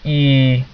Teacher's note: the tongue is that it's very high and it's very front when you say e that means you get the the height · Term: high and front